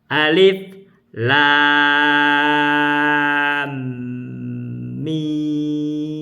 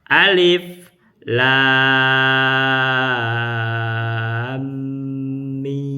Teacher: Lam itu 6 harkat. Mim dengan mim itu adanya idgham mislen, tahan 2 harkat lagi, idgham mislen shogir. Mim berikutnya 6 harkat.